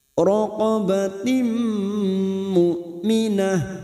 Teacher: Fatahriru raqabatim tahri kasra bertemu ya sukun 2 harokat riru raqabatim qabatim kasar tanwin bertemu mim siap masuk dan mendengung masuk pada huruf berikutnya yaitu huruf mim dan mendengung selama 2 atau 3 harokat